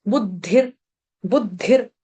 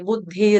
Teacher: विसर्ग विसर्ग का उच्चारण करेंगे हलंत र की तरह